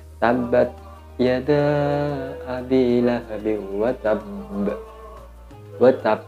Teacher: Dalam Al-Quran ada tajwid di mana ketika tasydid lalu bertemu dengan wakof, maka itu harus ditahan dulu baru dipantulkan. Kalau hurufnya ini huruf qalqalah.